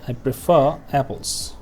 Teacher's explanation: the r sound at the end and the little r means we only pronounce this r sound at the end of prefer if the next word starts with a vowel